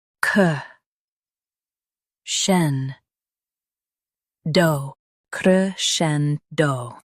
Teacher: Stress scen and keep do soft.